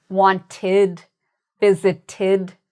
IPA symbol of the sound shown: ɪd